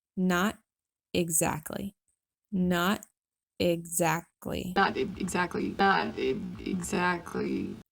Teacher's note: The first one is a stopped T, which has actually been glottalized in order to easily transition to the principal vowel